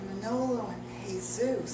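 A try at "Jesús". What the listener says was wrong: You don't pronounce the J.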